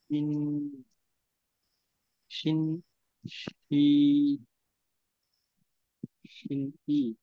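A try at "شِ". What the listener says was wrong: ই আসবে না, শুধুমাত্র হ্যাঁ, ই আসবে না।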